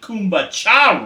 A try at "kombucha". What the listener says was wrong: It sounded like you said kumbaya.